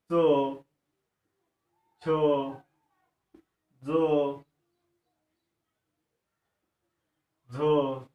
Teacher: जिभेचे पाते कठोर टाळूला लावून ज्या वर्णांचा उच्चार होतो त्यांना तालव्य वर्ण असे म्हणतात